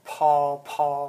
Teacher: aspiration, like paw, like the air coming out